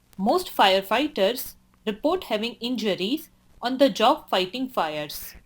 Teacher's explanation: I like how your tone goes up slightly after the second thought group. Then your tone falls when you get to the end of the sentence.